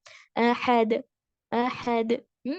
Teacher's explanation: ہا کے ساتھ ساتھ عین کی آواز نہیں آنی چاہیے. احد، ویری لائٹ، پھر درمیان سے.